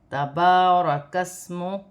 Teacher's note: با پر کھڑی زبر ہے، اسے ایک الف کی مقدار تک کھینچ کر پڑھا جائے گا